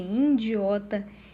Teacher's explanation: A nasalização da sílaba inicial I por influência do prefixo in